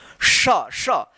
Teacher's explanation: जीभ जो है ना तालू में जाकर सटता है तो श देखिए कैसा उच्चारण हो रहा है। श जीभ जो है ना ये जीभ ऊपर जाकर तालू में सटेगा और तब आवाज का घर्षण आवाज हवा निकलेगा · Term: तालव्य श